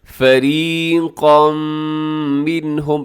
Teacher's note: فریقا میں را باریک ہوگی، اور اس کے بعد جو قاف ہے، قاف آپ نے موٹا رکھنا ہے